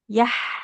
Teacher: Huruf H-nya kan di tengah tenggorokan ya.